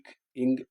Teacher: நாக்கின் அடி மேல்வாயின் அடியே பொருந்துவதால் பிறக்கும்.